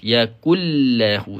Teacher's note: Tidak ada unsur dengung. Ya. Tidak ada unsur dengung dalam. Sebab apa? Sebab nun ni dah masuk ke dalam huruf huruf lam. Ya. Ni dengun ini idgham ni.